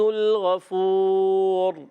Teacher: را پر پیش ہے، پر رہے گا، اور سکون کی حالت میں بھی جب یہ را ساکن ہو جائے گا تو بھی پر رہے گا